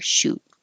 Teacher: more relaxed sheet and then shoot is an oo completely different your lips are rounded and the back of your tongue is a little higher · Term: ooh